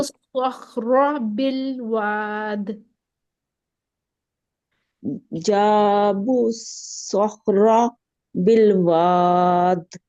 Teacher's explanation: سواد موٹا کر کے را کو پھر ہم نے موٹا کرنا ہے